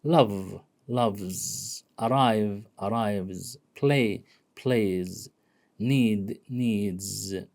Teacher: Okay, if the verb or the noun ends with these and we want to add s or es, the sa, the es or the sa is pronounced as z